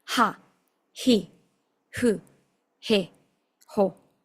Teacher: la H es expirada, como si fuera la H del inglés. No es una H muda como en el español. · Esto tiene que salir como un suspiro, como un soplido.